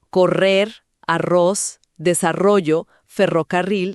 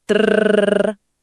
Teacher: Es hacer vibrar la punta de la lengua contra el paladar justo detrás de los dientes superiores. Hay que encontrar el punto y dejar que el aire haga vibrar la lengua relajada.